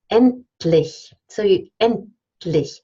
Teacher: You don't say endlich. You actually slur the T into the L. It's actually a liquid release.